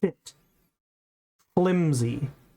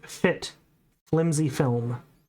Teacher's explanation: Fit is made with my lower lip and my upper teeth.